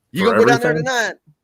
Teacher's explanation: Down there, they put the accent on the last syllable of the last word.